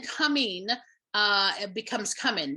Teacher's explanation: that NG changing to the N and also changing our vowel from the E vowel to the I vowel